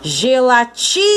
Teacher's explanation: A sílaba tônica é o ti